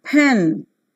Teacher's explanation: the front part of the tongue is raised to the position between half close and half open the lips remain unrounded